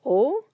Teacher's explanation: And then we have the direct object particle o. Remember, even though it's romanized as wo, very few people pronounce it as wo. Almost always pronounced as o.